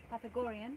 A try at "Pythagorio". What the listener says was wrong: Pythagoria. No, there's no N. Pythagoria.